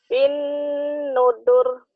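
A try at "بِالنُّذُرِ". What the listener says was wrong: Zalnya agak rapuh dikit ya. Bin nuzur. Bukan bin nudur. Bin nuzur. Diulang.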